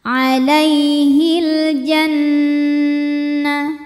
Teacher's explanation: alif lam qamariah sebab alif lam menghadapi huruf qamariah yaitu Jim maka lam sukun dibunyikan dengan izhar jelas